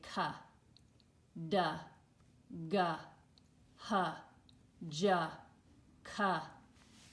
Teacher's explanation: Do you hear that short U sound, that sound after the letter?